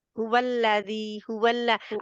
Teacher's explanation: लाम भी मोटा नहीं पढ़ना, हुवल्लज़ी सब स्माइली लेटर है